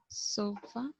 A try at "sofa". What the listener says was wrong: Con schwa. No lo pronuncies con A, pronuncialo con schwa.